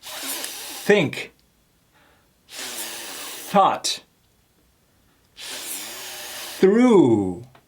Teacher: letting the air come out with no humming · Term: soft th